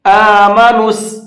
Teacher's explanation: نون کو ڈائریکٹ سین میں ملائیں گے